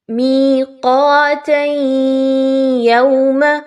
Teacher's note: قاف کے مخرج پہ خاص توجہ دیجیے، قاف موٹا حرف ہے، باریک نہیں پڑھا جائے گا